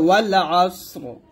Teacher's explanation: তারপর দেখুন ওয়াউ লাম জবর ওয়াল, আইন সদ জবর আস, রজের রি, ওয়াল আস রি আছে, যদি আপনি থামেন তাহলে বলতে হবে ওয়াল আসর। এখানে সদও সাকিন হবে এবং রটাও সাকিন হবে, দুটো সাকিন ধরে পড়তে হবে